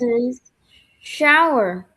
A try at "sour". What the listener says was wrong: Yes, perfect. No H. Sour only.